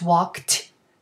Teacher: Listen, we have a k in walked, so k, f, p, ch, sh, s, and k, voiceless, the whole lot of them. So if the verb ends in a voiceless sound, then the ending ed also comes with a voiceless sound with the t